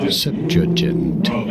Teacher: You do want to stress on the first syllable.